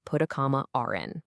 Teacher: And what's really wild is that non-rothic speakers will sometimes add an intrusive R between vowels just to link words together. It results in phrases that sound exactly like put a comma r in.